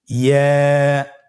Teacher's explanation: ইয়া হরফটি উচ্চারণের ক্ষেত্রে বারিক হবে এবং 1 আলিফ টেনে পড়তে হবে।